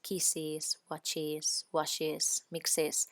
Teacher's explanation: Pongo una I porque si no, con 3 sibilantes ahí juntas es imposible, no se notaría. Al final la última S caería y no tendría sentido ponerla.